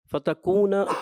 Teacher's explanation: کاف تھوڑا پر کی طرف ہلکا سا محسوس ہوا